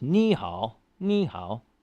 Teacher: you just got to switch those third tones to Rising like a second tone